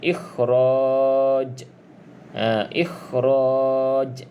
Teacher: huruf Jim salah satu daripada lima huruf Qalqalah maka kita perlu baca dengan adanya kita Panggil lantunan · Qalqalah kubra. Detakan ataupun lantunan tu sedikit kuatlah berbanding qalqalah sughra.